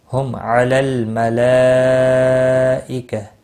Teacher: ہم میم ساکن کے بعد عین آیا ہے، اظہار شفی ہوگا۔ ہم علی الملائکہ، لام ساکن کو ہلانا نہیں، مد متصل ہے، چار الف کے برابر کھینچ کر پڑھیں گے۔ · ہم علی الملائکہ، لام ساکن کو ہلانا نہیں، مد متصل ہے، چار الف کے برابر کھینچ کر پڑھیں گے۔ وقف کی صورت میں ہا گولتا ہا ساکن پڑھیں گے، وقف بالابدال ہوگا، اور ملانے کی صورت میں گول تا کی حرکت کو بھی پڑھا جائے گا۔